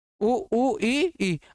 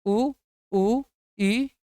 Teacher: अगर हम इन्हें बोलते हैं तो देखो मुंह भी नहीं खुलेगा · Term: समृत